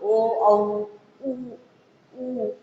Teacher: कंठ आणि ओठ या दोन्हींचा वापर ओ औ उ यावेळेस केला जातो